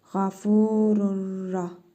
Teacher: Sonra yenə ra hərfi gəlib. Tənvindəki nun hərfini tələffüz etmirik. Yenə idğamı bila qünnə qaydasıdır.